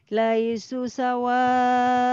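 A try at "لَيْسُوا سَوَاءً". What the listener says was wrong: Dua harokat. Laisu sawa. Tuhnya dua, panjang. Dua harokat. Laisu sawa.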